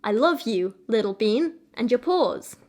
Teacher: the emphasis I want is to be on the you, on the bean and the paws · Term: anapestic trimeter